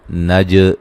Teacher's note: جیم پہ قلقلہ کریں گے، ہلا کے پڑھیں گے